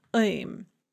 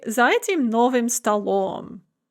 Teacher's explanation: That's the hard back followed by m, im.